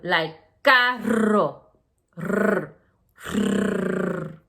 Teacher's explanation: you have to really roll your R for that double R, R, like carro, R, R.